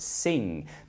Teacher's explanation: your tongue goes up here to your velum and makes an um sound like in the word sing but here we have it at the beginning of the syllable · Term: voiced Vela nasal